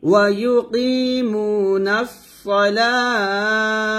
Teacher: এখানে ওয়াকফ ধরবে এখানে ওয়াকফ ধরলে তাটাকে আমরা হা উচ্চারণ করব লাতে 3 আলিফ টান দিয়ে তাটাকে হা উচ্চারণ করব